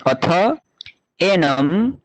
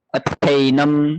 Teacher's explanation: अकार और एकार का हुआ ऐ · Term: वृद्धि संधि